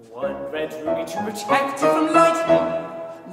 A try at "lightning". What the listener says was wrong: Light, no, I know what it is. You make the vowel longer. Lightning. Instead of lightning.